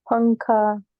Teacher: नून जो है उसकी आवाज़ नाक में जा रही है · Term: इख्फा